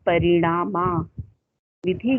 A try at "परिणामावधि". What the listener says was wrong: विधि नहीं, वधि कर लीजिए, वधि